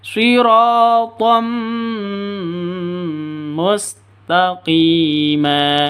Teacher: Masuk ke mim disertai dengung. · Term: idgham bi gunnah